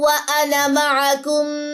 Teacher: آپ کو الف کے اوپر ایک چھوٹا سا صفر نظر آ رہا ہوگا، اٹس مین یہاں پہ الف جو ہے وہ پڑھا ہی نہیں جائے گا، الف بالکل سائلنٹ ہے. نون کی جسٹ زبر پڑی جائے گی